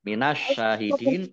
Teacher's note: alif lam samsiah karena tidak dibaca langsung masuk ke huruf berikutnya yaitu shin. Shin tasdid ini dibaca double. Kemudian shin fathah berdiri mat tobi'i panjang 2 harokat.